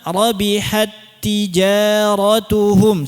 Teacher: Cara bacanya ta nya hilang sempurna ta pertama enggak ada ya. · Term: idgham